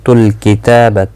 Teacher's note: تا کے اوپر کھڑی زبر ہے، 1 الف کی مقدار کے برابر کھینچ کر پڑھا جائے گا، با کو کھینچنا نہیں